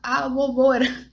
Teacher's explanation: Isso aí já grava para você que não existe o O e O no espanhol. É sempre o som fechado. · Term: O fechado